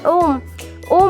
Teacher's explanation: ऐसा वर्ण जिसके उच्चारण में तिगुना समय लगे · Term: त्रिमात्रिका स्वर